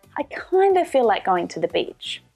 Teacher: Can you hear how I'm reducing kind of to kinda?